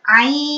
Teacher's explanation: Berarti panjangkan dulu 6 harokat lalu didengungkan. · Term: ikhfakan atau didengungkan